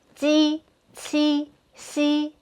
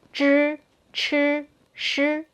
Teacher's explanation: your j/q/xi probably would sound like zh/ch/shi, which have the tongue curled up.